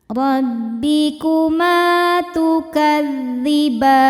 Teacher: Ma hukumnya mad tabi'i dhahiri sebab ada alif didahului harokat fathah. Cara bacanya panjang 2 harokat.